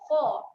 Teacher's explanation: huruf kha, huruf tebal kita akan bunyikan dengan bunyi huruf O, kha. Jangan bunyi dengan kha.